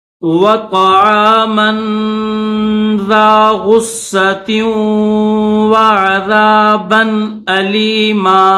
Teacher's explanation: تا کو واو کے ساتھ ملائیں گے